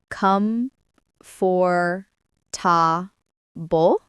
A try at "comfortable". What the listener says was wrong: That's what most people say when they read it. But in spoken English, we usually say comfortable or comfortable. We don't say every letter clearly. Comfortable.